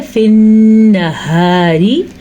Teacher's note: را کو باریک پڑھنا ہے کیونکہ ابھی ہمارے پاس را کے نیچے زیر ہے